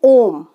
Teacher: जब हम किसी को पुकारते हैं या हम किसी को कोई आवाज देते हैं, है ना, तो जैसे हम बोलते हैं ओम, तो ओम बोलेंगे, तो ओम बोलने में जो हम स्वर खींच रहे हैं यानी तिगुना समय लगा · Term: प्लुत स्वर